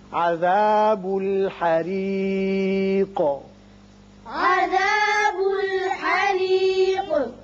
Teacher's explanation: یہ را باریک ہوگا اس لیے کہ نیچے کسرہ ہے اور قاف ساکن کر رہے ہیں، لہذا اس کی صفت قلقلہ ادا کریں گے